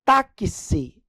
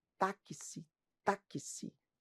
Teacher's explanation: Esse X aqui, pessoal, em táxi, ele tem ao mesmo tempo o som de K, S. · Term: dífono